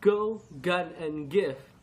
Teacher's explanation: The voiced velar sound, heard at the beginning of words like go, gun, and give, is represented by G.